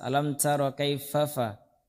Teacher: tipis dan ada hamesnya, ada hawa yang keluar. Alam tara kaifafa ala rabbuka bi ashabil fil, bukan fil.